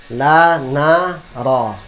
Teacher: Lidah naik ke gusi sedikit lam. Naik sedikit lagi nun. Naik sedikit lagi ra.